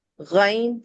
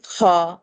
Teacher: غین خا اپر تھروٹ سے ادنی حلق سے ادا ہوا، منہ کے قریب ترین حصہ، اور غین ایک غرارے کی آواز تھی اور خا ایک خراٹے کی آواز کے ساتھ پریزنٹ ہوا